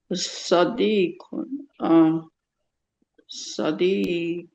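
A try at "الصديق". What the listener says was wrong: We have to pronounce the alif. We're saying it with alif lam. If we just say Sadiq, that means something, right? But we're saying everything is L. Alif lam. As-Sadiqu.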